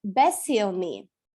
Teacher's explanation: не смягчаем «ни», еще раз подчеркиваю, да, это для русскоязычных извечная проблема, для начинающих. «Beszélni» – это разговаривать, говорить.